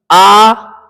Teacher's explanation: आ होठ गोल नहीं हुए ना